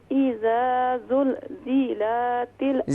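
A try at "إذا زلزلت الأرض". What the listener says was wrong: زیلاتل کیوں؟ زیلاتل کیوں؟ زلزلاتل. زلزلاتل.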